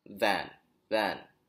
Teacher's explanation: There's a vibration when you say van with a V.